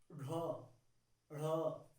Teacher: जिन व्यंजनों के उच्चारण से जीभ तालु से स्पर्श होती है, अर्थात जीभ का नुकीला भाग मुड़ जाता है और इसे द्विगुण व्यंजन भी कहते हैं। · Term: उत्क्षिप्त व्यंजन